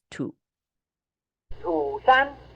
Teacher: it has a low falling Contour in this position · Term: halftone three